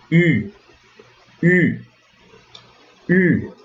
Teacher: Só que quando você vai, o som que sai não deve ser o som de U, mas o som de I. Então você faz o biquinho como se fosse para dizer U, mas faz o som do I. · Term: o U francês